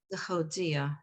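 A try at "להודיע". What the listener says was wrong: Lehodia. So you're still having back of the throat sound. You just want to open the hodia.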